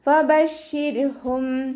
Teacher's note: റോക്ക് സുക്കൂനാണ്. റോക്ക് സുക്കൂനും മുന്നേയുള്ള അക്ഷരത്തിന് കെസ്രയുമായതുകൊണ്ട് റോ നമ്മൾ താഴ്ത്തി ഉച്ചരിച്ച് കൊടുക്കുക